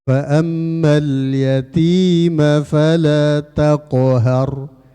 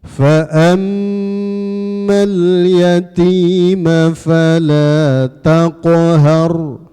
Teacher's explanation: Karena mim tasydid itu wajib hunnah.